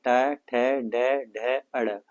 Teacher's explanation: मूर्धा में दोस्तों टा वर्ग वाले सारे वर्ण होते हैं, ट, ठ, ड, ढ, अड़।